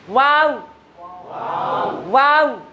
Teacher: endingnya ya tetap bibir kanan kiri ketemu